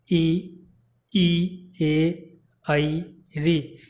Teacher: ई, ए, आई, री, यानी इनको बोलने में जो है जीभ का जो अगला भाग है वो क्रियाशील होता है। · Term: अग्र स्वर